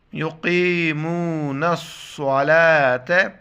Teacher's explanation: یہ صاد کے لیے سیٹی کی آواز اور صاد مشدد ہیں تو اس کو سختی سے پڑھ لیں گے